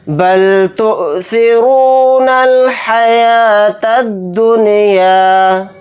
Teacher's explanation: یہاں پر حمزہ ساکنہ کے اوپر جھٹکا لگا کر پڑھیں گے، را کو یہاں پر موٹا یعنی پر پڑھیں گے کیونکہ را کے اوپر پیش ہے۔